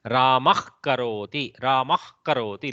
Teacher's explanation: when there is a ka or a kha, we get a jihva muliya variant of the visarga